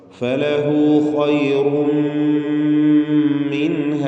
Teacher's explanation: അവിടെ ഇൽഹാർ ഹൽക്കിയാണ്. ഇൽഹാർ ഹൽക്കി, നൂനിനെ വെളിവാക്കണം.